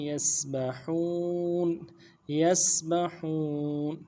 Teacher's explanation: فَلَكٍ يَسْبَحُونَ یسبحون، یا کو سین کے ساتھ ملانا ہے، سین سیٹی والا حرف ہے، سیٹی ادا کریں گے. با کو نرم سے ادا کریں گے، ہا کو واو کے ساتھ ملانا ہے، واو مدہ بھی ہے، ایک الف مدار میں کھینچیں گے، نون کو ساکن کریں گے.